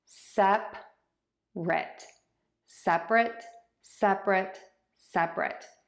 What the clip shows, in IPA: ˈsɛprət